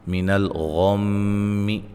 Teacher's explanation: غین کو موٹا، میم مشدد پہ غنہ